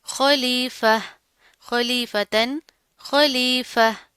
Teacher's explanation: लेकिन हम यहाँ पर वक्फ कर रहे हैं, तो वक्फ की यहाँ पर तो आ रहा है ना, तो यहाँ पर हम वक्फ कर सकते हैं, तो हम इसका वक्फ किस तरह करेंगे, हम इस गोल ता को गोल हा में बदल देंगे। ठीक है, खलीफा, खलीफतन, खलीफा।